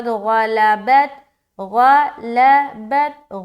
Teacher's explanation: غین کو موٹا رکھیں گے، حروف مستعلیہ میں سے ہے